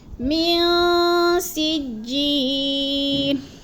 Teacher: نون ساکن کے بعد سین آ گیا تو ادھر بھی ہم نے آواز کو ناک میں چھپا کر پڑھنا ہے، اخفا کرنا ہے